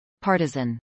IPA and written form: ˈpɑːɹtəzən (partisan)